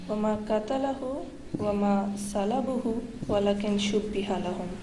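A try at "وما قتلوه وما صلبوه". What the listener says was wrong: تم غلط پڑھ رہی ہو نا، قتل لہو پہلے پڑھا تھا تم نے، یہ ہے وما قتلوا ہو وما صلبوا ہو۔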